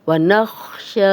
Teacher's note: شین پہ کھڑا زبر ہے، 2 حرکات لمبا کریں گے. یا پڑھنے میں نہیں آئے گی، جس یا کے اوپر زیر زبر پیش یا جزم نہ ہو، خالی یا ہو، وہ نہیں پڑھی جاتی.